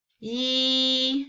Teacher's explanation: the first tone is E, straight, horizontal. The tone stays at the same level.